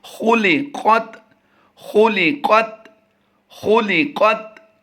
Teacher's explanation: ख़ा को पुर करेंगे, लाम हरूफ मुस्तफ़ला से है यानी बारीक पढ़ेंगे, और फिर क़ाफ हरूफ मुस्तालिया से उसको भी पुर पढ़ेंगे और क़ाफ को आगे ता के साथ मिलाकर इसकी मशक करते हैं।